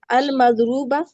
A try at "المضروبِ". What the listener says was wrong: المز المزرو، ایک منٹ، المزرو، واو کہاں گیا، مزرو ب، بالکل ٹھیک ہے، اسی کو جری بھی لے آؤ، المزرو بی،